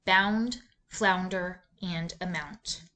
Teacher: this sound is a diphthong when the sound is produced your mouth moves two times